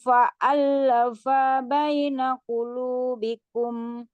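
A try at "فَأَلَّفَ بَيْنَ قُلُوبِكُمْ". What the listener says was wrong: Fa-nya pendek.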